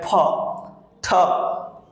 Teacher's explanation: With pressure, you can feel a airflow from your mouth when you'll pronounce aspirated sound like pa, ta.